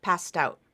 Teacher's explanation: It's actually the ST, passed out, where the T breaks apart, breaks away, and goes to the beginning of the next word. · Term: linking